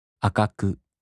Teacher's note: In the flat-type, there’s no accent.